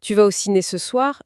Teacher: L'intonation montante à la fin de Tu vas au ciné ce soir suffit amplement à signaler au cerveau de l'interlocuteur qu'une question est posée.